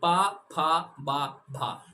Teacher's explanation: आपके दोनों होठ आपस में मिल जाएंगे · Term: ओष्ठ